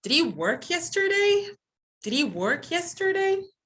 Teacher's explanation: this question is a yes or no kind of question, then you're having the rising intonation